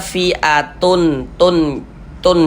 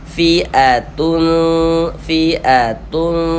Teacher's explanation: Nah, itu dari segi makhrajul huruf dia dekat dengan huruf ta ini. Maka cara membacanya ya kita baca samar kemudian didengungkan